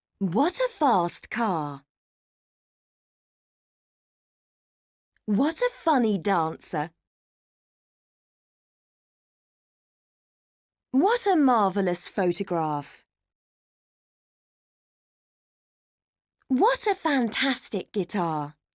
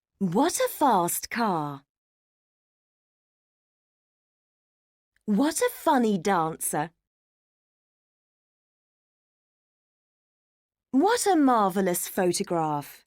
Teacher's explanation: focus on falling voice at the end of each sentence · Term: falling intonation